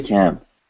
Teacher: Why? Because we're making a nasal sound with both of our lips closed, which we know is M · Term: nasal consonant